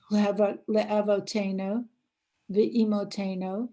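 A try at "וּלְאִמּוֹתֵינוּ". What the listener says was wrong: Not vi. Ooh. Ula. Ula.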